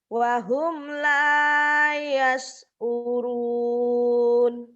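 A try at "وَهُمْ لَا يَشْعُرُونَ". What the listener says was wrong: Wahum la yash'urun. Tetap ya, itu sudah tinggi tapi belum tinggi, belum maksimal. Tinggiin. Kencengin lagi sedikit.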